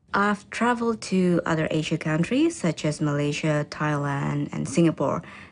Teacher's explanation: In the answer, notice how the countries are listed using a level tone that then falls for the last item in the list